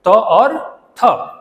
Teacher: ठीक है, दोनों एक ही जाति से, त वर्ग से है कि नहीं है? दोनों का उच्चारण स्थान एक है, दंत है। दोनों स्पर्श ध्वनियां